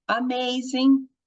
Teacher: um som do primeiro A como schwa, e o segundo, o som longo, porque está rolando o sanduíche de consoante com vogal.